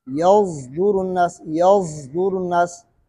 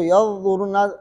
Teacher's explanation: صاد کا اشمام زا کے ساتھ ہے، غال کے ساتھ نہیں ہے